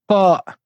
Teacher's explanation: La lettre ta nécessite le fait de lever l'arrière de la langue.